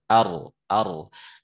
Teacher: getaran ujung lisan ketika mengucapkan huruf ro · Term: takrir